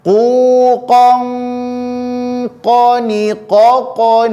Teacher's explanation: Qi qu baqo kemudian nun sukun atau tanwin bertemu Q maka karena Q Huruf tebal maka dia didengungkan pula menjadi tebal